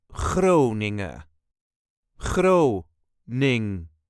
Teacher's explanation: There is a very light emphasis on the first part of the word.